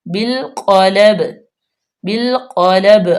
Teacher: اگر ہم وقف کریں گے تو با پہ کلکلا کریں گے